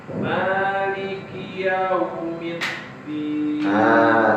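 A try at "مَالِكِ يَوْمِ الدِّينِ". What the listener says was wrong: Ini tergolong yang panjang. Maliki yaumid. Panjangan yaunya. Maliki yaumiddin.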